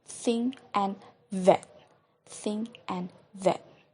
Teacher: Number 3 is dental. It sounds produced with the contact of the tips of the tongue and the upper front teeth.